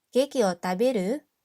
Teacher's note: we use the dictionary form of the verb and then we say it with the rising intonation to make it into a question